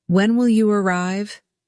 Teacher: Rise on when and fall on arrive. This falling pattern signals that you're seeking specific information, not just confirming something you already know. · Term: falling intonation